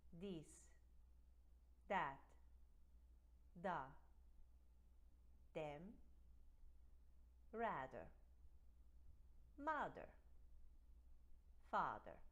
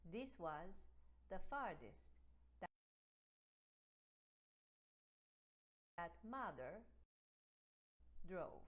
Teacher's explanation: For this sound, what the Spaniards do is they turn it into a D. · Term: voiced TH